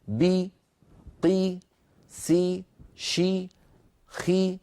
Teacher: كل هذه الحروف لما نطقتها ارتفع وسط اللسان وانخفض الفك السفلي قليلا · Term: حرفا مكسورا